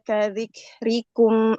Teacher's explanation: kaf itu hamesnya tidak berlebihan ya dia hames alami nafas